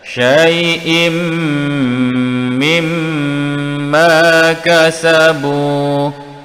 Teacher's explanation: Di sini pula wajibul gunnah mim bertanda syaddah. Dengung dua harakat pada mim yang bertanda syaddah.